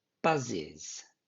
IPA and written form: bʌzɪz (buzzes)